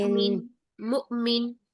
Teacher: यहाँ पे जो हमजा साकिन है हमजा की पकड़ साकिन है उसको झटके से पढ़ेंगे। झटके से आवाज सांस दोनों बंद करेंगे